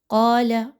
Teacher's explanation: قاف کو موٹا کر کے پڑھیے. لام کی حرکت کو زیادہ لمبا نہیں کرنا.